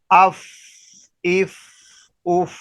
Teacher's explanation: تو فا کا مخرج یہ ہوا، ثنایا علیہ کے کنارے، سامنے والے جو اوپر والے دانت ہیں ان کے کنارے جب نیچے والے ہونٹ کے اندرونی تر حصے سے لگیں گے تو اس حرف فا ادا ہوگا۔ اور اس کو ہمس کے ساتھ ادا کرنا ہے کہ جب فا کو ادا کرنا ہے تو اس کی آواز کو، ہوا کو آہستہ آہستہ نیچے لے جانا ہے تاکہ فا ادا ہوتا رہے۔